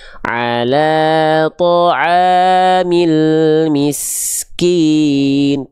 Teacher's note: contoh huruf kaf yang nafasnya berlebihan, tidak natural lagi, tapi takaluf berlebihan.